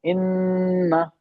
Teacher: इन इन्ना इन्ना ऐसे नहीं पढ़ते ना इन्ना इन्ना नहीं पढ़ते ना इन हमने नून को थोड़ा रोक लिया नाक में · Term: गुना